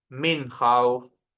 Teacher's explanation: noon sukun followed by kha. I should read clear noon.